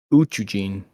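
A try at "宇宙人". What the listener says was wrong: And that second U is like a longer U, so it's like Uchujin. the JIN there is like a gene. Almost like like you're saying JEEN.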